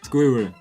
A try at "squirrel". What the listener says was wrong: You don't roll the Rs.